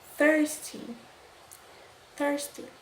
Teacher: vocês perceberam que eu fiz o som do TH, mas eu não coloquei a língua para fora